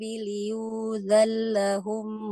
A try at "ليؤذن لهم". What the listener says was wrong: بالتخفيف وقعد لهم ليؤذن لهم بفتح اللام عن النون وليس بإدغامها ليؤذن لهم ليؤذن لهم هكذا